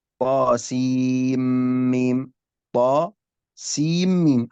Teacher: السين هنا نقول عنها مد لازم حرفي مثقل. لماذا؟ لأن أضغمت في الميم الذي بعدها